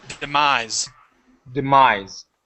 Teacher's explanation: demise with a voiced S at the end